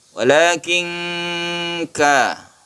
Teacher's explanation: Ini disebut ikhfa ya. Ketika kita membaca nun, kita bersiap membaca kaf, itu ikhfa.